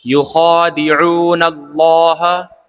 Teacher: خڑا زبر، اس کو کھینچ کر پڑھتے ہیں ایک الف کے برابر